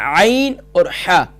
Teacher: ادا ہوتے ہیں مڈل آف تھروٹ یعنی گلے کے درمیان والے حصے سے